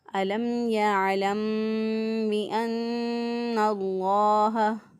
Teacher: لفظ اللہ سے پہلے دیکھیں زبر ہے نون کے اوپر، تو اس لیے لفظ اللہ کو پر پڑھیں گے · ایک الف کے برابر گنہ کی آواز جو ہے یہاں پہ میم ساکن پہ بھی گنہ کی آواز کو ایک الف کے برابر ناک میں ٹھہرا کے پھر ادا کرنا ہے۔ اسی طرح نون مشدد پہ بھی ایک الف کے برابر گنہ کی آواز کو ناک میں ٹھہرا کے ادا کریں گے